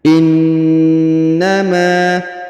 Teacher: huruf ma dipanjangkan 2 harokat karena di depannya terdapat alif